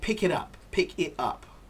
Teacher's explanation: pick it up we say pick it up pick it up so the t is not really pronounced